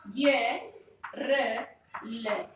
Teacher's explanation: ये कहाँ से बोला जाएगा, तालु से, र कहाँ से बोला जाएगा, मूर्धा से, और ल कहाँ से बोला जाएगा, आपके दंत से।